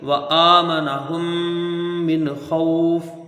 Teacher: ہے ہم پہ، اور من کو یہاں جلدی پڑھ دینا ہے، نون کو ظاہر کر کے بغیر غنہ کے جلدی پڑھنا ہے